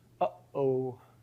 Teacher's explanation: That catch that you're getting in your throat, that's a glottal stop.